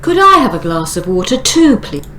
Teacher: So the water is now old information. We don't want to stress water